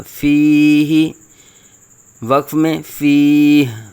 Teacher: ہا کے نیچے زیر ہے تو ہم نے ہا ساکن میں بدل دیا